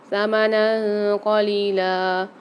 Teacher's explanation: یہاں پر 2 زبر کی تنوین کے بعد قاف آ رہا ہے، فمال غنہ کے 15 حروف میں سے یہاں پر دوبارہ سے غنہ کریں گے